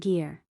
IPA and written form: ɡɪr (Gear)